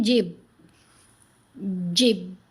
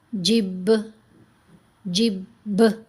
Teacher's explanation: با، با ان حروف میں شامل ہے تو با پر ہم قلقلہ کریں گے۔ اگر کوئی پڑھے جیم زیر با ساکن جب، جب، تو نہیں قلقلہ ہوا۔